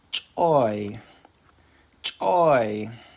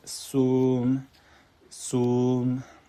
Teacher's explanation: So you start high go low on the pitch.